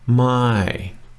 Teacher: my is our only real tone in this sentence and it's the falling tone it's the falling my which means no if it were the